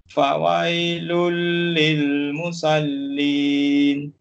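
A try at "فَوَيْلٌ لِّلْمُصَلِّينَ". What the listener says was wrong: Musol, jangan musal jadi huruf sin. Fawailul lil musallin. Musallin, huruf sad, jangan musal jadi huruf sin. Jaga makhraj tu kena jaga. Huruf sad dengan sin dia dekat-dekat je. So kalau kadang apabila kita terbaca dah terbiasa ni fawailul lil musallin, musal dia usul musol tebal.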